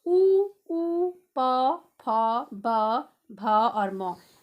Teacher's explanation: मेरे ओंठ आपस में मिल रहे हैं, एक दूसरे को टच कर रहे हैं